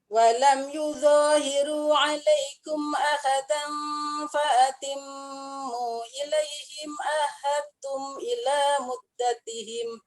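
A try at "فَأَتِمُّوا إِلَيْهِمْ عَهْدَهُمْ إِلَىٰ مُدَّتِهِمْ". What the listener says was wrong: Bukan salah silah mak munfasil tak. Ada berubah baris tu.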